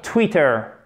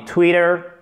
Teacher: Il est entre deux voyelles. OK, c'est exactement comme little. Du coup, ça se prononce presque comme un de.